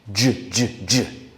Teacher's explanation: To make j, we just need to add our voice to the ch sound. So the T becomes a D, and the sh, sh becomes a zh, like zh, d, zh, j.